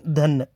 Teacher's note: धा महाप्राण घोष दंत स्पर्श